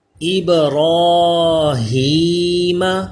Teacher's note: را کے اوپر کھڑا زبر ہو پھر بھی پر رہتا ہے اس لیے اس کو موٹا پڑھ رہے